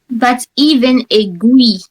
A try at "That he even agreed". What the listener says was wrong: There is one sound missing. You missed something. Before even. That, even, there is something between. That, even agreed.